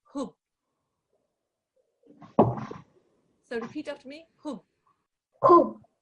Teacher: The ha with the dhamma joins onto the bar mushaddad.